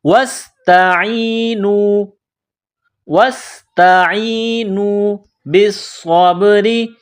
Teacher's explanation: وَاسْتَعِینُوا واو کو سین کے ساتھ ملانا ہے، سین میں سیٹی کی آواز پیدا کرنی ہے. تا کو باریک کرنا ہے.